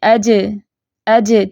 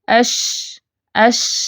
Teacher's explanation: تو جیم کی آواز سخت ہوتی ہے لیکن شین میں کیا ہے؟ نرمی ہے. اش، اش. چلتی ہوئی آواز ہے اس کی.